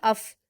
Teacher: फ़ा पर जज्म है तो हमें कलकला से बचना है क्योंकि यह हुरूफ कलकला में से नहीं होता। तो हम हमज़ा को फ़ा से मिलाएंगे, अफ़।